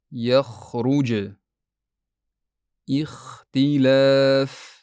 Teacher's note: Aslida esa xo tovushi xalqumning yuqori qismidan, yaʼni tamoqdan chiqadi. Bu xato odatda xo tovishini ortiqcha kuch bilan aytganda sodir boʻladi.